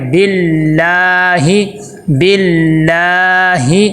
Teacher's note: لفظ اللہ کے پیچھے زیر آ جائے تو لفظ اللہ کو باریک پڑھتے ہیں